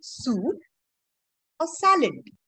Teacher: So the voice rises and falls. When you're talking about a list of things.